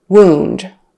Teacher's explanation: wound is the noun wound with a long u kind of sound